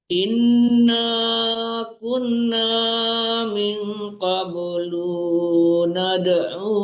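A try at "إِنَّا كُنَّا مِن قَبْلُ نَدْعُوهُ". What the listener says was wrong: Itu lu-nya kenapa dipanjangin, tidak panjang?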